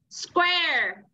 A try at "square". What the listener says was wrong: Không phải quest. Yeah, it's not quest.